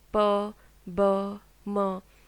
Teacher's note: the sounds are produced when the lips are brought together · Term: bilabial